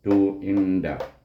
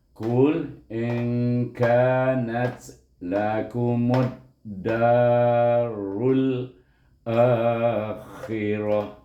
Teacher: bila sukun kita mati dengan huruf ha, bukan dengan huruf ta. Apabila kita sambung wasal, baru kita hidupkan bunyi ta.